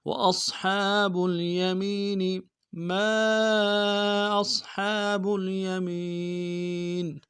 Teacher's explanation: ما میں میم کے ساتھ الف مدہ ہے، الف مدہ کے اوپر مد عارض ہے، دو الف مقدار میں کھینچیں گے · وأصحاب الیمین میں میم کو یا کے ساتھ ملائیں گے، یا مدہ ایک مقدار میں کھینچیں گے، نون کو نمشہ ادا کریں گے.